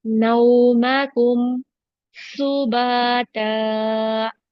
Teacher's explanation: सीन में सिटी का sound रखेंगे